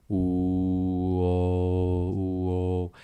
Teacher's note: Ligeramente hay una apertura más amplia en la O y el sonido es una generación eh, que se sucede en la parte posterior y también sigue siendo un sonido grave. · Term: semicerrada